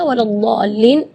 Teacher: Mad di situ kita harus panjang membacanya 6 harakat, karena di situ hukumnya mad lazim kalimi mutsaqqal.